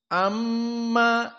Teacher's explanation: Dan mim musyaddadah hukumnya gunnah, dan gunnah harus dari hidung. Maka makhrajnya dia khaysum.